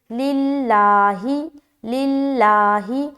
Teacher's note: لفظ اللہ کا لام کو باریک رکھنا ہے کیونکہ اس سے پہلے والے حرف لام کے نیچے زیر آ گیا